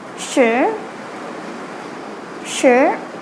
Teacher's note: The second tone is more of a question-like tone, So the tone is going upwards. It's how we say the last word before a question mark in English, like sure, sure.